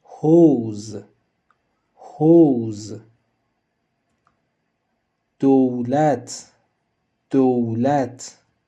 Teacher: Eh bien, nous avons terminé avec les 6 voyelles du persan, mais attendez, il existe aussi une voyelle composée ou, en bon français, un diphtongue en persan, formé par la combinaison des sons O et OU. Pour la représenter, nous utilisons toujours la lettre Vav.